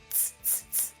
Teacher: Just the C, like 呲 in cats, 呲呲呲, which needs the tongue to be more flattened.